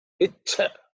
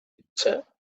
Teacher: So the Cha has to be aspirated with extra air.